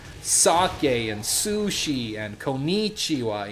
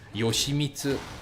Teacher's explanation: you will pronounce every single kana, so every single syllable basically, for an equal amount of time. And if it's flat like that, then you're speaking Japanese properly and you're gonna make yourself understood.